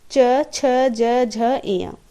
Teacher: च वर्ग से तालु का स्पर्श होता है। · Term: तालव्य